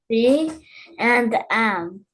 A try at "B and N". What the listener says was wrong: Not M, N.